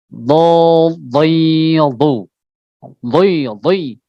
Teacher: Huruf dot dia tepi lidah. Ya, bertemu dengan gigi geraham yang atas.